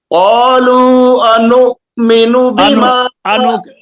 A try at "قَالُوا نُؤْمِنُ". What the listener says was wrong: یہاں الف کدھر ہے؟ آپ قالو انؤمن پڑھ رہے ہیں, الف کدھر ہے؟